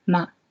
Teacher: The 5th one is a neutral tone, so it's basically light and neutral, ma.